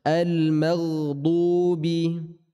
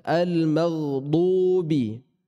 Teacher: Khusus huruf dad namanya sifat istitalah. Yang di saat kita membacanya ada penekanan, ada penahanan. Terkhusus di saat sukun atau di saat bertasydid.